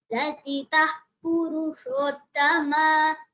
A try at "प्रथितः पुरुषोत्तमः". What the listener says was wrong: It is not Purushottama, Purushottamaha. Okay, there is a visarga. And also the tha should be clearer. Prathita Purushottamaha. Mahaprana should be clearer. Prathita Purushottamaha.